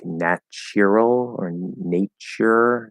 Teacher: in the original british there's supposed to be like a y sound